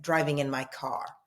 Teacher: So in America, in the United States, I'm driving in my car. That's what you'd say, driving in my car, the retroflexive rhotic R.